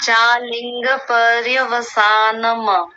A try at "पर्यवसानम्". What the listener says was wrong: नहीं, पर्यवसानम। अतिरिक्त जोर मत लगाइए, अ मत बनाइए बाद में, क्योंकि मकार हलंत है।